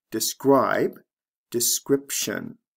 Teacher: here the long i becomes a short i describe description and the b becomes a p sound before the t